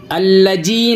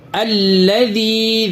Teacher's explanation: الجی نہیں، الذی، ذال دونوں دانتوں کے بیچ میں زبان کی نوک کو لگائیں